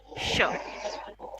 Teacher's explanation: टंग थोड़ा सा पीछे आ जाता है जब हम श का साउंड करते हैं तब